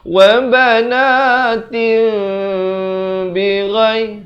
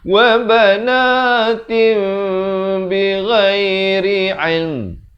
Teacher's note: Bunyi nun atau tanwin itu ditukarkan kepada bunyi mim. Banatin jadi banatim dengan 2 harakat. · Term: iqlab